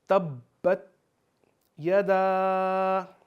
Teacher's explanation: اب تبت میں با کے اوپر تشدید ہے تو یہاں پہ ہم تھوڑا ٹھہر کر پڑھیں گے